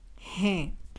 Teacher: The ending hai changes to hain. A nasal sound is added into it, which indicates the plural object. Probably you'll not detect the difference in hai and hain, but there is a nasal sound in the second one.